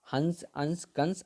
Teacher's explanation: अनुस्वर का उच्चारण नाक से